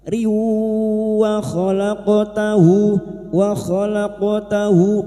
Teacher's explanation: Nariwa kasroh tanwin atau kasroh tan bertemu waw, idgham biguna sama idgham biguna masuk dengan mendengung masuk pada huruf waw dan mendengung selama 3 harokat